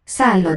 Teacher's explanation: the accented long A phoneme is front vowel, Szálloda. whereas the short one has some lip rounding.